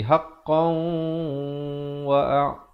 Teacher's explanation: Kalau pilih untuk sambung jadi haqqan wa'a. Jadi kena baca dengan wajah idgham bi gunnah. Tanwin bertemu waw.